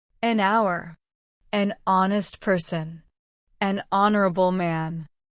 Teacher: The h is not pronounced in these words. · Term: silent h